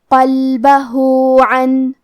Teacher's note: قاف حروف تفخیم میں سے ہے تو ہمیں یہ حرف کو موٹی آواز میں پڑھنا ہے قلبہ. آخری میں حرف الہا پہ الٹا پیش ہے کیونکہ یہاں حکم ہے مد صلہ صغرا تو ہم اپنی آواز دو مد کے برابر لمبی کریں گے